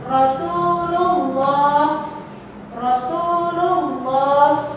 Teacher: Dibaca tafkhim karena didahului oleh harokat fathah atau dhammah